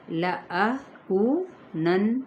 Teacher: کو پہ واو مدہ، نون پہ غنہ کرنا ہے